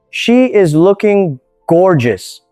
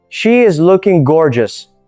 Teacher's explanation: Now say it again, but place a little more emphasis on the word gorgeous. Make it slightly louder and slightly longer.